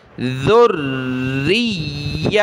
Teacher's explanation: ذال پر زبان نکالی جاتی ہے، نرمی کے ساتھ پڑھنا ہوتا ہے۔ اس ذال کو ہم نے را کے ساتھ ملانا ہے، را کو یا کے ساتھ۔ · را اور یا دونوں کے اوپر یہ تشدید ہے، اس وجہ سے ہم نے را اور یا دونوں کو جمع کر سختی کے ساتھ پڑھنا ہے